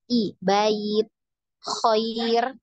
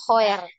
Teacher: huruf ya sukun itu dia cenderung ke huruf i ya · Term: sifat linnya